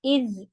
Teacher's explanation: ذال جو ہے وہ زبان کی نوک سے ادا ہوتا ہے